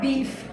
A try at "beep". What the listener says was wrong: Because you said beef.